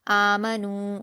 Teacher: نون پر واو مدہ ہے 2 حرکات کھینچیں گے